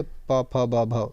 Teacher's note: तो साथियों यह आपकी ओष्ठ ध्वनि है जो बा। ठीक है, प फ ब भ, ये प वर्ग में आता है जो कि ओष्ठ ध्वनि हो जाएगा आपका